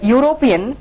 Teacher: The word European starts with a U sound rather than E or A sound. U is not a vowel sound, so we need not treat this word as a vowel word that starts with a vowel sound.